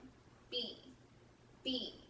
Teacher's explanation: I'm going to use both my lips and close them. B, B. This is a voiceless sound. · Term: sound B